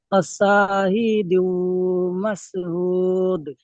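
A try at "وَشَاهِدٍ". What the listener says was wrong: দু হবে না, ওয়াশাহিদিন। দিউ।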